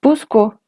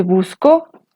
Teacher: en busco el acento está en la primera sílaba y en busco el acento está sobre la segunda sílaba